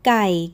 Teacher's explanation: opens with a hard sound made right at the back of your mouth, like the G at the start of go, with no breath after it